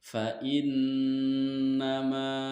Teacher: Karena nun dalam posisi bertasdid dan cara membacanya yaitu didengungkan antara 2 atau 3 harokat. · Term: gunnah